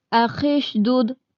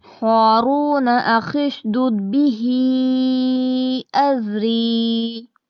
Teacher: وقف نہیں کریں گے تو خا کو شین سے ملائیں گے،